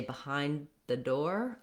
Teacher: If I say behind the door, I just stop my D and release right into the TH.